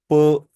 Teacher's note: vocal cords में कोई vibration नहीं है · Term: वॉइसलेस